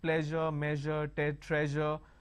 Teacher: we don't have any word that starts with a je sound, but we have pleasure, measure, treasure, all these words where the sound is in the middle